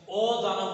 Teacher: নাবাচক না বোধক যদি অ হয় তাহলে সেখানে অ এর উচ্চারণ পরিবর্তন হবে না